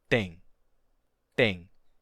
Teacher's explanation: em português o T não tem uma aspiração